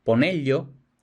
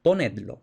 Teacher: Se asimila la consonante final de un infinitivo, es decir, una R, o de un imperativo plural, es decir, una d, con la consonante inicial del pronombre enclítico. · asimilación de R + L o D + L, que se convierte en el sonido de pollo